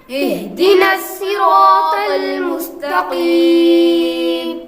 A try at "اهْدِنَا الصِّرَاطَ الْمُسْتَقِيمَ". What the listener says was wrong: نسی آپ نے باریک پڑھا، یہ سین پڑھا، سین نہیں یہاں پر بلکہ صاد پڑھنا ہے۔ اہدنا